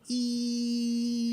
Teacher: it just is like one pitch that doesn't change